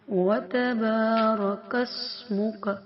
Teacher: سین ہے تو سیٹی کی آواز